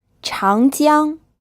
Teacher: this pronounced with a second tone then a first tone